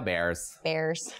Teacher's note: it's a little bit more like open and back and up with the vowels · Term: Chicago accent